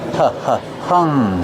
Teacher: Use a short uh sound like cuff and up. H- hung. And then the nasal sound for the ng.